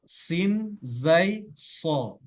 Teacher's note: sod itu dia berada pada ujung lidah yang menyentuh bagian bawah.